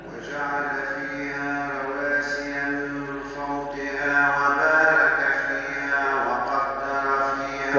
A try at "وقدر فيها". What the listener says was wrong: وقدر فيها الدال مرقة وقدر فيها